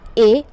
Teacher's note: ए और बड़ा ऐ ये बोले जाते हैं कंठ तालु से, तो कंठ और तालु इसका उच्चारण स्थान है